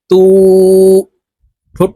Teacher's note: উল্টা পেশের উচ্চারণ ঠোঁট গোল করে উপরের দিকে ধাবিত করে উচ্চারণ করতে হবে